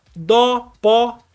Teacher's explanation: o acento agudo dá um som aberto